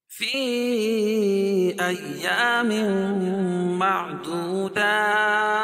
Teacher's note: تنوین کے بعد ادغام مع الغنہ کے 4 حرف میں سے میم ہے تو یہاں غنہ کر کے پڑھیں گے